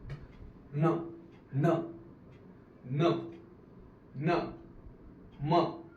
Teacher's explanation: नाकातून आपला हवेचा मार्ग मोकळा होतो. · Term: अनुनासिक